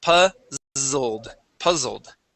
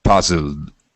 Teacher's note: The Z as well is going to get a vibration in the throat.